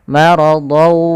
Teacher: Maka ketemu waw, tanwinnya tadi hilang, masuk langsung ke huruf waw. Maka maradaw sambil dimasukkan ke khayshum karena dia bi gunnah dengan gunnah. · sambil dimasukkan ke khayshum karena dia bi gunnah dengan gunnah. Nah, idgham bi gunnah sendiri ini bisa kita namakan juga dengan idgham naqis, yang dimana tidak secara utuh kita hilangkan secara utuh huruf-huruf yang sebelumnya, tapi masih menyisihkan sedikit suara huruf nun.